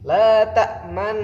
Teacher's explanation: Jadi suara dhammah itu tidak terdengar tapi disyaratkan dengan bibir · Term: ismam